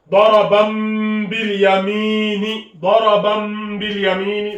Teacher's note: On a le tanwin bil fatha ici, qui est suivi par le ba. Le ba, donc du coup le tanwin est remplacé par le mim. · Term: qalb